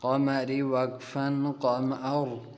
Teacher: وقف کے اندر ہم را کو ساکن کر دیں گے